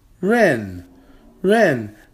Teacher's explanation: that is a fourth tone character that's a falling tone